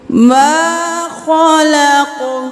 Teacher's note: یہاں پہ الف مدہ ہے، ایک الف کے برابر کھینچیں گے